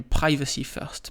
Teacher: je l'ai dit avec une plosive très violente